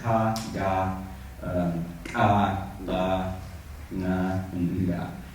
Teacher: every single one of those has an inherent vowel, which was an ah vowel